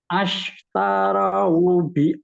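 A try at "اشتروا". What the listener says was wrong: Itu jangan ash Itu nggak boleh dari ash. Itu jangan pakai patah, nggak boleh ash. Ish. huruf ketiga. Kan ini huruf ketiganya ta. Ta itu harokatnya patah ya.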